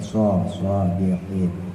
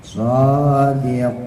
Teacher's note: Ada taswirnya, ada suara seperti siul burung.